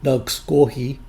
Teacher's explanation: Pronounced directly from the syllables, this word would sound like nagisgohi. In colloquial speech, the second vowel is dropped to sound more like nagsgohi.